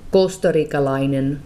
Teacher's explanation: The Finnish version does not have the aspiration; there's no air that comes out.